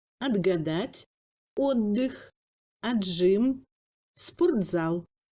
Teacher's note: Le T se sonorise devant les consonnes sonores ayant une paire, sauf le V.